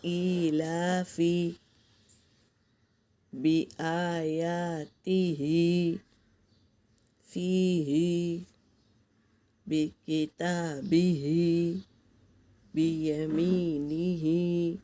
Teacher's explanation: زیر کو تھوڑا بھی نہ کھینچے اور مجہول بھی نہ ہونے دے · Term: کھڑا زیر